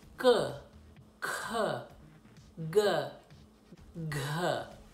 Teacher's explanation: that was at the back of the throat or fairly back into the throat then it goes to the thicker part of the tongue against